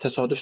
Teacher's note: Təsadüf sözündə uzanma var. Amma təsadüfən sözündə uzanma yoxdur.